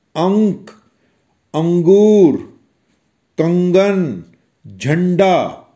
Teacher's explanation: इन सभी अक्षरों की ध्वनि मूलतः नाक से निकलती है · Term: अनुस्वार